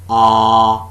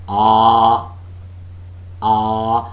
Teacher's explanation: a part of the tongue between the center and the back is in the fully open position that is what the first thing ah no contact being made